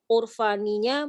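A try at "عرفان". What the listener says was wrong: Iya, itu bacanya Irfan ya, lebih tepat Irfan, bukan Urfan. Irfan.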